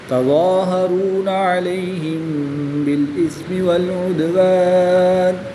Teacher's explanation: میم ساکن کے بعد حرف با آ گیا تو یہاں پر اخفاء شفوی ہوگا یعنی غنہ کر کے پڑھیں گے